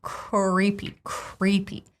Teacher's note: Of course, it's an American R. It's almost like a vowel sound, R. And I almost add a little schwa in between, so I don't say kr.